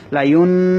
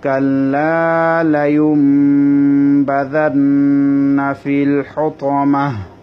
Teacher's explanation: নুন সাকিনের পরে বা এসেছে, সেজন্য নুনটাকে মিম পড়া হবে, নুনটাকে মিম দিয়ে বদল দিতে হবে। আমি এখানে লায়ুন বলি না, আমি বলেছি লায়ুম। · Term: ইকলাব